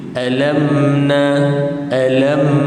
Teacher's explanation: betul-betul tutup kedua-dua bibir matikan mim